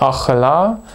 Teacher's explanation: die haupt betonung liegt auf dem la am ende und ein neben ton auf der ersten silbe das hat zur folge dass wir dieses zeichen hier also als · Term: neben betonung, Nebenbetonung